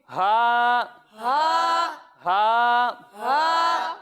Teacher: جب ہم ہا کی ادائیگی کریں گے تو اسے ہم حلق کے نچلے حصے سے پڑھیں گے